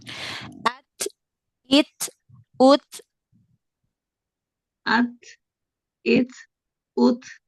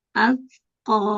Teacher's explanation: di makhrajnya ya di makhrajnya huruf Kaf atau huruf ta Pokoknya dia berhenti dulu suaranya di makhrajnya lalu renggangkan sedikit makhrajnya sambil nafasnya dialirkan ke depan untuk mendapatkan sifat hamesnya